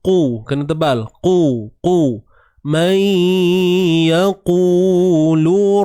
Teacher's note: Jangan lemahkan bunyi qaf tu, kan? Man yaku, nanti jadi kaf pula. Yaku, qu, beza ku dengan qu beza.